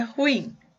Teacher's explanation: O in é mais forte, então ela é uma oxítona.